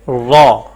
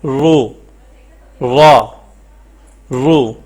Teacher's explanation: جیسے را مفتوح ہو تو پر اور مکسور ہو تو باریک پڑھی جاتی ہے، یعنی را کے نیچے زیر ہو تو وہ ہم باریک پڑھتے ہیں، اور اوپر زبر اور پیش ہو تو اس کو پر پڑھتے ہیں